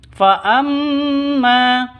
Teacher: mim tasdid faamma dengung dua tiga ketukan ya dua atau tiga ketukan karena gunah musyaddada Man utiya nun